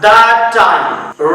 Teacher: दैट ये खत्म हो रहा है साउंड टी पे और नेक्स्ट वर्ड स्टार्ट हो रहा है सेम साउंड से, तो टी बस एक ही बार प्रोनाउंस किया जाएगा